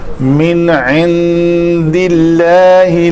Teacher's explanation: آگے اللہ اس میں جلالہ کا لام کا ماقبل کسرہ کے ساتھ ہے تو اس کو پتلا پڑھیں گے · یہاں پہ نون کے بعد عین حروف حلقی میں سے تھا تو اس کو من پڑھا, اور اس نون کے بعد دال ہے حروف اخفاء میں سے, تو یہاں اس نون کے اوپر اخفاء کریں گے.